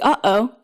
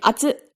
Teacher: the glottal stop, which you'll find in English words like uh-oh, and at the end of emphasized Japanese words like atsu.